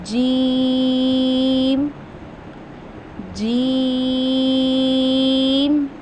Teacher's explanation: जीम को हम जुबान के दरमियान और तालू यानी कि जो हमारे मुंह का तालू है उसके दरमियान से अदा करते हैं।